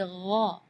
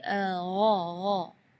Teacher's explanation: Di ayat ini yang pertama di makhraj huruf ghain ya, ghairil maghdubi ya, perlu diperhatikan, bukan G, bukan huruf G ya, bukan ga, tapi gha. Jadi kalau ga itu dia makhrajnya dari lidah. Ya, tapi kalau huruf ghain itu dari bagian tenggorokan ya.